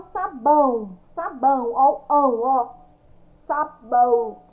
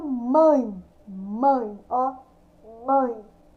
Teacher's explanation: Vocês vão ouvir o som que sai do nariz de vocês, o som nasal.